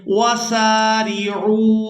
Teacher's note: عین کو واو مدہ کے ساتھ ملاتے ہوئے کھینچ کر ادا کریں گے